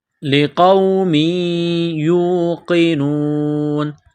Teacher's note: قاف کو موٹا کرنا ہے لقوم یوقنون